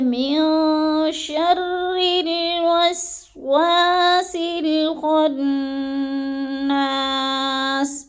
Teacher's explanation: گے، الہ الناس، من شر من پہ جو ہے اخفا ہے، نون ساکن کے بعد شین آ گیا ہے، تو ادھر ہم نے اخفا کرنا ہے، آواز کو ناک میں چھپا کر پڑھنا ہے